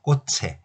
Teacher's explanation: 자, 앞말받침의 자음이 치읓일 때 이렇게 모음으로 시작하는 형식 형태소 에, 이 이런 것들이 오면 꽃에라고 쓰긴 하지만 발음은 치읓을 그대로 올리기만 하면 되죠.